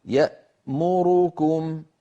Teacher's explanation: يأمركم 3 ضمات متوالية، على القارئ أن يسوي بين أزمنتها